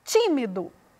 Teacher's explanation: A sílaba pronunciada com mais ênfase foi o ti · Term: sílaba tônica